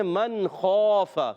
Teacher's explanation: خا حلق کے اوپر والے حصے سے ادا ہوتا ہے